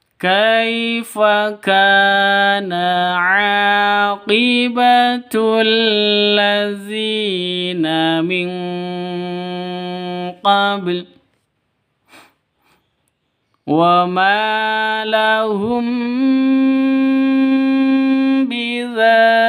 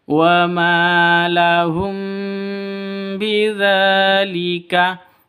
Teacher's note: Ma panjang dua harokat, dua ketukan, ada alif diawali dengan fathah.